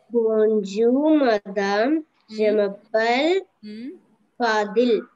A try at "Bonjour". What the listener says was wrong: When you said je m'appelle, that was perfect sound. But when you said bonjour, there you were having mistakes. The same sound for je m'appelle.